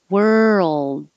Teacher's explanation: don't release the d hold the tongue behind your top teeth you will hear the d